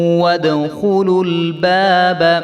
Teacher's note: خا کے اوپر پیش ہے، اس کو ہم نے لمبا نہیں کرنا